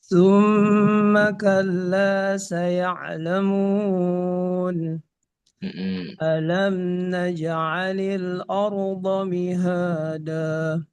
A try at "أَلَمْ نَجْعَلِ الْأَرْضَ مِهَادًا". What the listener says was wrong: Jangan ordo, jangan o, a. Alam naj'alil ardo, ar. Ar. A ketemu ro. Ro-nya tebal, tapi hamzahnya tipis. Ar. A. Ru.